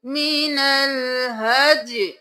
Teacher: आयत नंबर 196 में देख लीजिए, यहाँ पर हम किस तरह से वक्फ करेंगे, मीनल हज, यहाँ पर या की आवाज आएगी, या साकिन हो जाएगा, हरकत गिर जाएगी